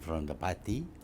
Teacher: Malay English goes up and down, up and down, up and down a lot more than what we hear with Canadian or North American or British English